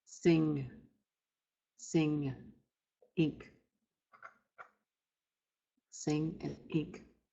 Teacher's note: When you pronounce these words, you're not pronouncing the N, you're nasalizing the I.